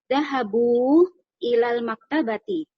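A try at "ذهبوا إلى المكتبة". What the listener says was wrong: Sahih. Barakallahu fiik. Ahsan Ibu. Mumtaz.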